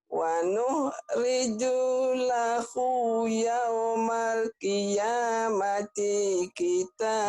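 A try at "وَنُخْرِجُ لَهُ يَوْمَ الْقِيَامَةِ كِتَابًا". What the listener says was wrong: Jangan kiamati. Jangan kiamati, ya pendek.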